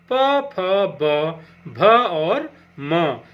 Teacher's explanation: इनका उच्चारण स्थान ओष्ठ होता है। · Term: प वर्ग